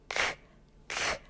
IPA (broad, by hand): k